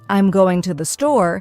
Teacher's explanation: the stress naturally falls on going and store. The smaller words like I'm and to the R less emphasized and spoken quickly.